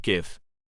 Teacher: A voiced velar plosive